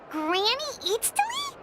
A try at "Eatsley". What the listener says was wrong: Yes, Granny Eatsley. But emphasis on Eatsley, not Granny.